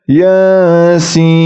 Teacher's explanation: tapi dibaca Yasin Adapun Inya itu dua harakat Mad thii Sin Sin itu panjangnya 6 harakat · yasin, yanya 2 harokat, sin itu 6 harokat.